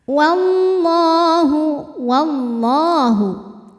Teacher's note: syamsiah sebab alif lam menghadapi huruf Syamsiah yaitu lam cara bacanya alif lam tidak dibaca atau disebut dengan Idgham Syamsi wallah lam jalalah dibunyikan secara tafkhim karena didahului harakat fathah di